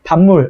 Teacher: 비읍이 뒤에 있는 미음의 영향을 받아서 미음으로 바뀐 거죠. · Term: 비음화